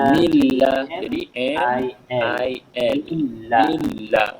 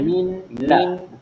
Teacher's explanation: nun mati bertemu dengan lam. Sama juga kita masukkan dalam huruf yang bersabdu. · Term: idgham